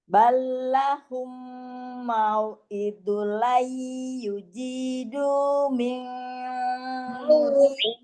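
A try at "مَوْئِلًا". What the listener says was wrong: Tapi ditahan, tapi lamnya tetap tasdid, ya. Mau idul lai. Jangan kelamaan, tapi di tasdid tetap ada tasdidnya, diidghamkan itu ditasdidkan. Lai aidul lai.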